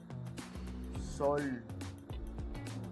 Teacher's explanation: los labios se cierran un poco y se redondean